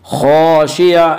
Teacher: ابصارها الف مدہ الف ہمیشہ مدہ ہوتا ہے، الف سے پہلے زبر ہوتا ہے، الف مدہ کو ایک الف کے برابر کھینچ کر پڑھیں گے